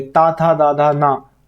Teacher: जो ता वर्ग है वो उसका उच्चारण स्थान क्या है? दंत है।